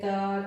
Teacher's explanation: दंतव्य जो दांत भाग से जो है बाधित होकर क्या, इसका उच्चारण दांत भाग से टकरा करके होता है